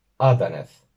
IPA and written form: 'ɑ.dɑ.nɛθ (adaneth)